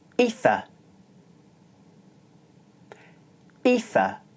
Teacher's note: In the word ether, the vowel is followed by the unvoiced consonant th, and so it's pronounced short.